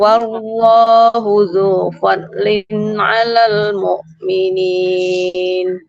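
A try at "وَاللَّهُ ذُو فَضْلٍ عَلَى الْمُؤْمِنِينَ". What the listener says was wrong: Boleh diulang bisa sedikit di fadlin. Huruf dotnya dia harus tebal ya. Wallahu dzu fadlin. Fadlin.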